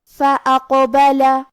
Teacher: کلمت فأقبل میں قاف پہ جزم ہے، تو کیونکہ قاف حروف القلقلہ میں سے ہے تو ہم یہ حرف کو ہلاتے ہوئے یہ کلمہ کو پڑھیں گے